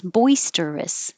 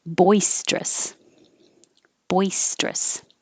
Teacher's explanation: you can say it with three syllables boisterous or just two syllables